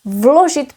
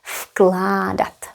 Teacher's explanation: Because of k. K is voiceless, so v will be voiceless too.